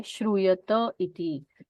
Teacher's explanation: अय का यकार निकल जाता है और सिर्फ अ सुनाई देता है